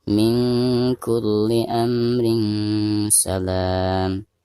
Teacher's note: Tapi jika kita memilih berhenti pada tanda yang kedua, maka di sini harus diwasolkan min kulli amrin salam, seperti itu. Sekaligus tanwin yang ada di bawah ro tersebut harus dibaca samar disertai dengan gunah atau dengung ya, karena ada tanwin berhadapan dengan salah satu huruf ikhfa di sini huruf sin.